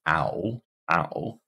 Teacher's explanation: we start uh Central low and then we move high back to get ow